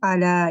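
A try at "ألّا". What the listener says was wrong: Alla tasydid alla. Ada an disembunyikan di lebur pada lam.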